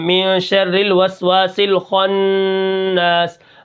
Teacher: خا آ گیا تو ہم خا کو کیا کریں گے، موٹا کر کے پڑھیں گے